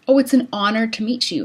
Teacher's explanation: words that start with an H in the spelling but don't actually have an H in the pronunciation